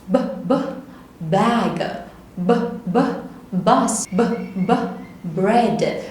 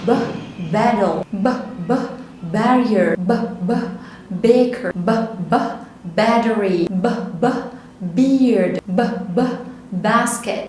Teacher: الفوكال كوردز بتاعتي بتترجرب كده، يبقى ده voiced sound يعني صوت منطوق